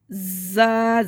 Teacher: زا میں سیٹی ہوگی. زا زبان منہ کے اندر رہے گی. اس میں بھی زبان منہ کے اندر رہے گی.